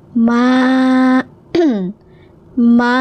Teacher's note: mim fathah, ada alif di depannya, dibaca selama dua harakat